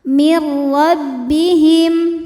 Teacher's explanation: Kemudian ada hukum namanya idgham bila ghunah. Karena nun sukun menghadapi huruf ro, maka nunnya masuk ke ro tidak disertai dengung. Artinya cukup kita tekan saja.